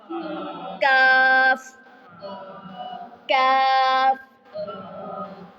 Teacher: زبان کی جڑ کے قریب اور اس کے مقابل، یعنی اس کے بالکل سامنے سخت جو حصہ ہے وہاں سے ادا ہوگا کاف